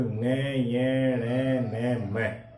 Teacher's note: ये नासिक्य की श्रेणी में आ जाते हैं, क्योंकि इनका उच्चारण किससे होता है? नाक से होता है।